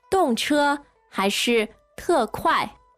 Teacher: which dong is this? Fourth tone, right?